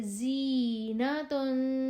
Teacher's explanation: ز کی آواز باریک اور سیٹی والی